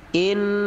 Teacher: Contoh inna, fokus pada huruf alif, ada kasroh di bawah dibaca inna, ada gunnah ditekan 2 harokat. Inna, 2 harokat saja.